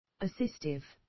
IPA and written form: əˈsɪstɪv (Assistive)